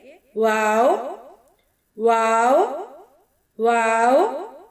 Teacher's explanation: واو، دونوں ہونٹوں کو گول کرتے ہوئے ادا کریں گے۔